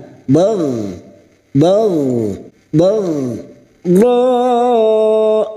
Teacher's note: huruf Gin sukun hati-hati Huruf Gin jangan sampai dipantulkan